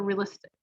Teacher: The tick is stressed, so realistic.